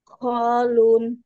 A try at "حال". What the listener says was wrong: Ha. Ha bukan kha. Ha.